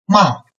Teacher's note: the beginning point for the fourth tone is rather high. So it's as high as the first tone and suddenly make it down.